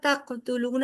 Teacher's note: قاف پہ کلکلا ہوگا، تقتلون حروف کلکلا میں سے ہے کیونکہ ساکن حالت میں قاف ہے